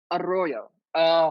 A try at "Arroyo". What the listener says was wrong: You got to roll that tongue, honey. You got to roll the tongue.